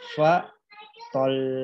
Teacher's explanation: jangan langsung dimatikan fa tol, tapi ditahan dulu selama 2 harokat